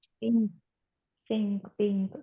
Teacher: جب ہم پنک پڑھتے ہیں تو ہم این کے لیے زبان اوپر تالو پہ لگاتے ہیں